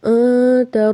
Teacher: نون کی آواز ناک میں جائے گی، اکفا ہوگا، تا کو تیزی سے پڑھیں گے، رب، رو کو با سے ملائیں گے، با کو بھی تیزی سے پڑھیں گے۔